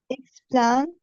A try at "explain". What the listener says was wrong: Okay, the AI should be pronounced as A. So this is what